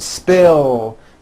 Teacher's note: spill ends with a voiced l sound spill so it becomes spilled I spilled the juice trim becomes